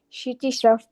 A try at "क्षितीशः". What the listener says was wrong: Kshiti, just stretch that a little bit, okay. Kshitishah.